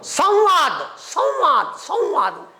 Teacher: अनुस्वाराचा उच्चार व सारखा घ्यायचा